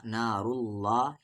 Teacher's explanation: یعنی یہ اللہ کا لام ہیوی پڑھا جائے گا